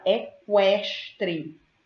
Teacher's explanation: Quando eu pronuncio a palavra equestre, eu ouço o som do K e eu ouço o som do U. Cada um apresenta o seu som.